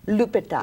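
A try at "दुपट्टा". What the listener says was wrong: No, dupatta with the D.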